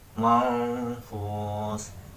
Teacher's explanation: Hukum bacaan yang ketiga yaitu ikhfa, terdapat di ayat kelima, yaitu manfus, terdapat nun mati bertemu dengan fa, sehingga dalam pembacaannya harus didengungkan.